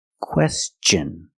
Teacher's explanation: When T-I-O-N is after an S, then it's pronounced differently. It's pronounced with the ch sound, the hard ch sound like chicken and change.